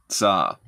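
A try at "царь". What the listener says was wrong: Okay, but the way you say it is tsar. Yeah, it's four letters. Tse, a, er, and the soft sign, so that the R is soft. R. It's like a soft one. Why are you making it hard? You have to, r. It's soft. Yeah, because r is hard and r is soft.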